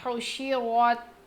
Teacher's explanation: ح کی آواز حلق کے درمیانی حصے سے، رو کو ہم موٹا پڑھیں گے اور تا سے ملائیں گے کیونکہ جزم ہے اس پر.